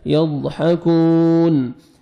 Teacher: حا یضحک، کاف پیش واو جزم کو، یضحکون، نون زبرنا یضحکون، سٹاپ کریں گے، نون ساکن ہو جائے گا